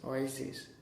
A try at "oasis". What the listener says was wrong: You're saying a bit Z. Oasis.